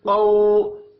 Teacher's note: قاف حروف مستعلیہ ہے، پر پڑھا جائے گا، اور قو واو لین ہے۔